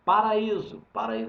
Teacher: Paraíso é formado por um iato como a sílaba tônica é o i antes da última ela é paroxítona